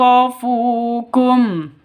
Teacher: nun mati bertemu dengan Ya cara bacanya masuk ke ya disertai dengung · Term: idgham bighhunah